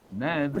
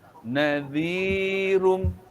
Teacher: Lepas itu qalqalah pun tak ada. Selepas itu takrir bagi huruf ra, dia bergetar.